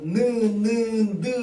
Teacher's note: 우리가 느 발음할 때 혀끝이 붙었다 떨어지는 거. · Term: 윗잇몸